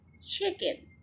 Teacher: So यहाँ पर first syllable के ऊपर हमने स्ट्रेस डाला, ये 2 सिलेबल वर्ड था chicken